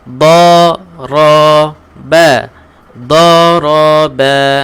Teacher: huruf dha ni sama ada kita letakkan ataupun kita gerakkan sisi lidah kita ke gigi geraham atas, bukan gigi geraham bawah